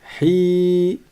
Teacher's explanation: j'ai bien prolongé le ha parce qu'il y a derrière un ya.